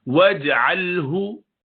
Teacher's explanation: جیم پہ قلقلہ کریں گے ساکنہ قطب جد میں سے